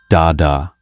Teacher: an alveolar plosive, made by the tongue on the alveolar ridge